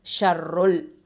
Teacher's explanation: ருல் ருல் அப்படின்னு சொல்லும்போது அதை வந்து தஃஹீமாக உச்சரிக்கணும்